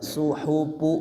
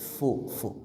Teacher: bibir bawah bagian dalam dengan ujung gigi seri atas ya udaranya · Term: huruf fa